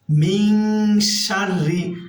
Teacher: মিন এখানে গুণনা হবে ইকফা গুণনা, কারণ নুন সাকিনের পরে ইকফার হরফ শিন আসছে। মিন শাররি, আর রটা এখানে আমরা পাতলা করে পড়বো, অর্থাৎ বারিক করে পড়বো, কারণ রয়ে মুসাদ্দাদ নিচে জের আছে।